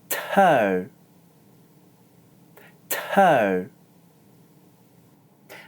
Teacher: This is an aspirated sound, meaning that you need to exhale strongly. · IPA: /t/